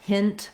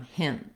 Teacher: At the ends of words, we will often use a stopped T, so a word like want becomes want, or a word like hint might become hint.